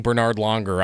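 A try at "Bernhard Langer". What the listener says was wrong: It's not Bernard. It's Bernhard, isn't it? Bernhard There's an H in there. It's Bernhard.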